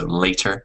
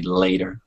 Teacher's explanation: the British English will hit that T. So later. With American English, maybe that T is a little softer.